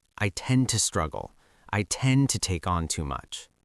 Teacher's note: When native speakers say tend to in a fast, natural conversation, they usually do not pronounce both T sounds clearly.